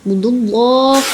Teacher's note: Allah itu tafkim tebal ya.